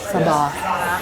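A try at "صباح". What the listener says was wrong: How long do you hold out that word though? Like when you say it, it's like sabah. You should say it faster. So like sabah al-khair, or like sabah al-khair.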